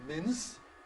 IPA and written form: mɪns (mince)